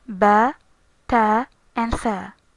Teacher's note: They are pronounced from the lips, tip of the tongue, and the upper teeth.